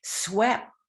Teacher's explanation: we don't explode a push of air in that final sound it's just a mouth form without that push of breath